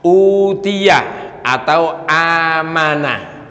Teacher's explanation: termasuk kategori apa tadi huruf mad di sini dibacanya berarti panjang cara membaca panjangnya cukup dengan dua harakat atau satu Alif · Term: mad badal